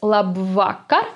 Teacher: another funny thing that we spot here is that the k the sound k sounds as if there were two letters k in this word · again the second syllable is under stress it's la vaca and another funny thing that we spot here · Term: consonant double